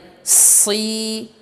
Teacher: si tebalkan, kemudian juga ada sifat as-safir.